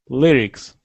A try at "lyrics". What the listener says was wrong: Lyrics. Lyrics. Not E. Lyrics.